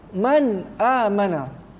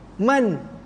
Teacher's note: Baik ketika waqaf atau wasal, tetap juga nun mati tu bunyi.